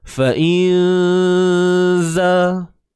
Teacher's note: So kita tahu huruf zai ni huruf yang nipis. Maka dengung yang berlaku juga ni nipis. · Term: ikhfa haqiqi